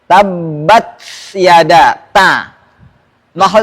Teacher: ta di mana bertemu dengan pangkal gigi seri atas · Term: huruf ta